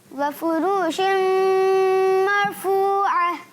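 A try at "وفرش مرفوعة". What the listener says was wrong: وفرو کو کھینچیں گے یا نہیں کھینچیں گے؟ کھینچنا نہیں ہے. را کو بھی نہیں کھینچنا, فا کو بھی نہیں. وفروش مرفوعہ.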